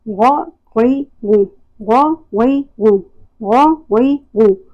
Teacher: موٹا اور بھاری ادا ہوگا اور ابتدائی حلق سے ادا ہوگا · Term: غین